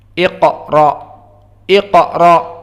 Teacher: Maka dia adalah aqsal lisan, pangkal ujung dari lisan di sini di dalam qa, dengan apa-apa yang di atasnya dari langit-langit yang berupa daging. · Maka qaf mufakhamah wa hunaka qalqalah as-sughra.